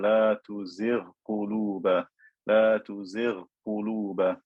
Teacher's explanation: I don't merge the ghain into the qaf.